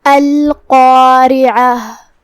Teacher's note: کلمت القارعہ میں یہاں حرف القاف ہے. قاف کی ادائیگی زبان کے جڑ اور تالو کے نرم حصے سے ہے جو کہ قاف حروف التفخیم میں سے ہے، لہذا ہمیں قاف کو بھاری آواز میں ادا کرنا ہے. · قاف کی ادائیگی زبان کے جڑ اور تالو کے نرم حصے سے ہے جو کہ قاف حروف التفخیم میں سے ہے، لہذا ہمیں قاف کو بھاری آواز میں ادا کرنا ہے. اس کے بعد مد الف ہے.